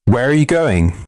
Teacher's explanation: The voice falls on going. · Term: falling intonation